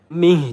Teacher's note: mih jadi ha besar di pangkal tenggorokan